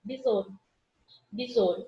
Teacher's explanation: esse U fica apagado. É como se eu estivesse falando assim, ó, besouro, besouro. · E como esse O fosse um O fechado · Ao invés de ter um, fosse um Ozinho fechado, como se eu tivesse um acento circunflexo nele. Por isso que o O, que eu pronuncio com mais força, é a minha vogal e o U é a minha semivogal.